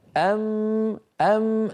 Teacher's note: فيقف باسنانه كلها الاسنان العليا على الشفه السفلى وكان الصوت يصير للسامع ميم